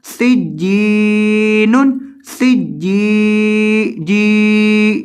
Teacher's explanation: एक अलिफ के बराबर लंबा करना है, इसको ज्यादा लंबा नहीं करना। अक्सर तलबा इसको बहुत ज्यादा लंबा करके पढ़ देते हैं, तो आपने इसको ज्यादा लंबा नहीं करना, सिर्फ एक अलिफ के बराबर लंबा करके पढ़ना है।